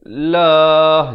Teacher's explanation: Dan lafz jalalah dibaca nipis.